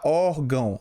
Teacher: esse ditongo aqui é nasal, porque o som sai pelo nariz, tá bom? O som aqui do ditongo sai todo pelo nariz, tá? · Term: ditongo nasal